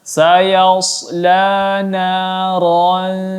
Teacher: ada tanwin bertemu dengan huruf dha, maka dibaca dengung selama 3 harakat ataupun disamarkan.